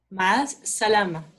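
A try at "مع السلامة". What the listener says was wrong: Fantastic.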